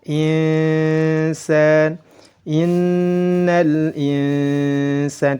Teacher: Nun sukun bertemu dengan sin dibaca ikhfa. Nun sukunnya disamarkan, disertai dengan dengung dan ditahan 2 harakat.